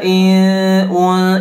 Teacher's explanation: ikhfa harus disamarkan Nun sukunnya